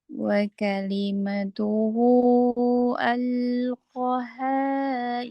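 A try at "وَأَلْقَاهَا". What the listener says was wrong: Panjang. Koknya panjang, haknya panjang.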